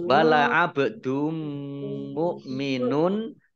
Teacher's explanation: bak sukun bacaan qalqalah dibaca memantul ditampakkan pantulannya.